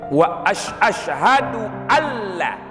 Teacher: Kalau dalam salat, maka idgham yang bila gunnah nun yang berjumpa dengan lam itu wajib dibuat semestinya dengan sesuai tajwidnya